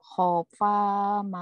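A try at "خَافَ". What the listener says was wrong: Ko-nya panjang.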